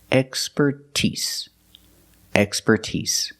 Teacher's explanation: with expertise, we put the stress on the first and third syllable. That's the first and the last syllable.